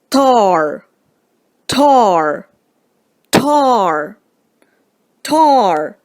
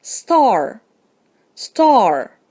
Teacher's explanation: you should be able to feel some physical evidence of aspiration the puff of air accompanying the sound at the beginning of tar but not in star